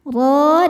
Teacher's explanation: dibaca tafhim karena berharakat di atas yaitu fathah. Cara bacanya ditebalkan roho dan hukum madnya adalah mad thobi'i muqaddar.